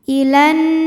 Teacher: nunnya gunnah musyaddadah atau wajibul gunnah karena nun tasydid, maka dibacanya dengung